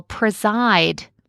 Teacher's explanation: Depending on how you pronounce it, you might even emphasize the first part, preside, where you might clearly hear a long E, but if not, that second syllable, preside, I clearly hear a long I